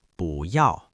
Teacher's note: when bù comes before a fourth tone word like yào, it changes to a rising second tone